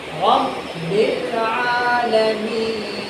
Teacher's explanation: حالت وقف یعنی وقف کرنے کی حالت میں نون ساکن ہو جائے گا تو نون کے اوپر جزم آ جائے گی.